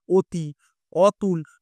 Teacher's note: তারা অকে ও উচ্চারণ করে